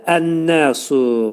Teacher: Əl-nəsu, burada demək ki, şəmsiyə, ləm şəmsiyə, demək ki, nun şəmsiyə samiti olduğuna görə, burada ləmin üstündəki sükun verildi nun hərfinə və burada ləm neynədir? Nuna çevrildi. Oldu ən-nəsu.